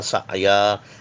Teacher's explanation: سعیا عین کو تھوڑا سا جھٹکا لگے گا